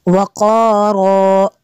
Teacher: double زبر کو وقف میں الف سے چینج کر لیتے ہیں